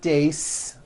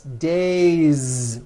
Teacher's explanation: It's not days, unvoiced. It's days with a voiced Z ending.